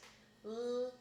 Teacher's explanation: L being made with the tip of your tongue and your alveolar ridge, but L can also be made in other parts of your mouth, depending on where it is in the word. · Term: the alveolar lateral